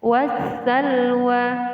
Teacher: Alif lam syamsiyah ditandai dengan ciri-ciri huruf setelah alif lam ditandai dengan tasydid. Jadi alif lam di sini sudah tidak berarti lagi atau tidak terbaca.